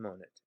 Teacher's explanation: And once again, that e must shorten before nt.